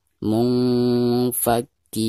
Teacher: Adapun bacaan panjang di sini dihukumi mad tabi'i karena ada harkat kasroh kaf berhadapan dengan ya sukun, dibacanya dua harokat.